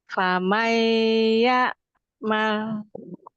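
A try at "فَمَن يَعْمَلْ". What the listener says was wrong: Coba jangan famai. Umi kasrohkan sempurna. Mai ke bawah ya, kasroh ya, rahangnya turun. Ya sukun ya. Kalau kasroh itu famai gitu. Famai jangan miring.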